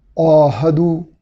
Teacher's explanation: मीम की ज़बर के बाद चूँकि हर्फ मद्दा अलिफ है तो ज़बर को 1 अलिफ के बराबर यानी खड़ी ज़बर के बराबर लंबा किया जाएगा। औहदु, ऐन को उसके मखरज से यानी हलक के दरमियान से अदा करेंगे और ऐन पे चूँकि खड़ी ज़बर है गोया यहाँ मद करेंगे यानी 1 अलिफ के बराबर लंबा अदा करेंगे। · औहदु, ऐन को उसके मखरज से यानी हलक के दरमियान से अदा करेंगे और ऐन पे चूँकि खड़ी ज़बर है गोया यहाँ मद करेंगे यानी 1 अलिफ के बराबर लंबा अदा करेंगे। हा पे ज़बर है और हा का मखरज ऐन के मखरज से नीचे है, हलक का इब्तिदाई हिस्सा।